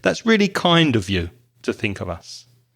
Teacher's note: Notice the of becomes weak, as with most prepositions.